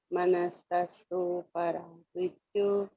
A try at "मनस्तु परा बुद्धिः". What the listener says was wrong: इसमें दो शब्दों का उच्चारण थोड़ा ध्यान से करना है कि मनसह तु परा बुद्धि, मनस तु, मनस्तस्तु नहीं है, मनस तु परा बुद्धि। स जो है बीच में आधा है, मनस्तु परा बुद्धि, संधि विच्छेद से देख सकते हैं, मनसह तु, मनसह तु